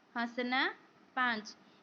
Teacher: इनका उच्चारण मुख और नासिका दोनों से मिलकर निकलता है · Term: अनुनासिक